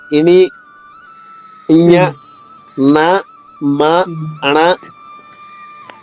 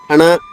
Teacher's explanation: మ పలికినప్పుడు అణ అణ అన్నప్పుడు కూడా గాలి ముక్కు నుంచి వెళ్తుంది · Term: అనునాసికలు